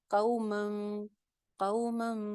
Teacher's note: ایک الف کے برابر غنہ بھی ہو جائے گا · نون کی آواز میم میں چینج ہو گئی